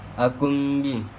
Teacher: iqlab sebab nun sukun bertemu huruf ba ketika dibaca huruf nun berganti menjadi mim